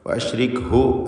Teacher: ഹ ദമീറിന് ദീർഘമില്ല അവിടെ, കാരണം തൊട്ടുമുമ്പിൽ സ്ഥിരപ്പെട്ട സുക്കൂനുണ്ട്, തൊട്ടുമുമ്പിൽ സാക്കിനത ഹർഫുണ്ട് എന്നതുകൊണ്ട്.